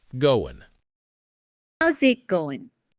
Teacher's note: the G at the end of goin' is almost always silent in casual speech.